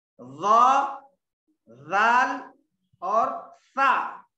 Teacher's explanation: ये 3 हरूफ ऐसे हैं जो हमेशा इसको पढ़ते वक्त जबान की नोक दांतों के बाहर होना सब, ठीक है। जबान की नोक दरमियानी दांतों के किनारे के पास होना, दांतों के बाहर होना, पूरी बाहर नहीं होना, सिर्फ थोड़ी होना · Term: लीसावी